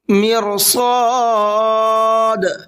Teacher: مرصاد یہاں را کو بھی پر کریں گے اور صاد کو بھی پر کر کے پڑھیں گے